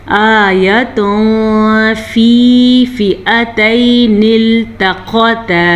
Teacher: تنوین کے بعد فا ہے جو کہ حروف اخفا میں سے ہے. تو ہم یہاں پہ اخفا کا قاعدہ کریں گے چھپے ہوئے غنّے کے ساتھ